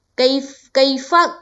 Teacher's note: کئی کو ہم جلد پڑھیں گے کیونکہ یہاں یا لین ہے